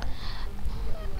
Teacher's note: Karena tanwin bertemu dengan huruf ba, hukumnya iqlab, membacanya dengan menggantikan dengan suara mim.